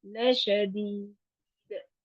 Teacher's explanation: لشدید میں بھی انہی چیزوں کا دھیان رکھنا ہے کہ لا لمبا نہ ہو اور دال پہ قلقلہ